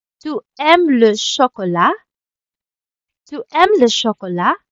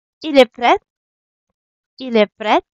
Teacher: you would just say the normal sentence, but you're gonna raise your voice at the end to show that it's a question. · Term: rising tone